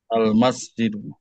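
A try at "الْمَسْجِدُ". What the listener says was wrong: Iya, oke, bagus.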